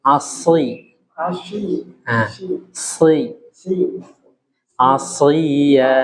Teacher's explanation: Huruf shad fokus ujung lidahnya di gigi seri bawah.